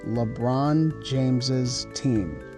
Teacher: the extra syllable added when our noun ends in S · we add an extra syllable with the apostrophe S to make it bosses